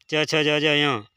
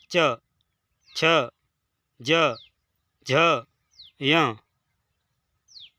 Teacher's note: कंठ वाले की कंठ से आती है, लेकिन च वर्ग वाले की तालु से आती है थोड़ा ऊपर। च, छ, ज, झ, य, इनका उच्चारण स्थान तालु होता है।